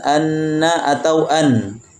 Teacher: Demikian juga bacaan anna atau an. Kita akan mendapatkan suara nun keluar dari ujung lidah menempel pada bagian gusi atas.